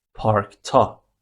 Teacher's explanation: As the only vowel in park is a, you need to use da, and as it ends with k, you need to make it voiceless